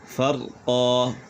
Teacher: یہاں پر وقف بالابدال ہوگا، یعنی دو زبر کو الف سے بدل دیں گے اور ایک زبر پڑھی جائے گی